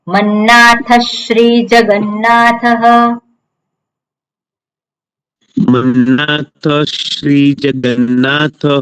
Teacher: મન્નાથ શ્રી જગન્નાથઃ મન્નાથ શ્રી જગન્નાથઃ હવે મન્નાથઃ પછી શ્રી છે વિસર્ગ પછી શકાર આવ્યો વિસર્ગનો કયો શકાર થશે હા શ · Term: અડધો શકાર